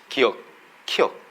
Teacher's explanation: 혀 뿌리가 지금 목구멍 뒤를 한번 닫았다 열립니다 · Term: 어금니 소리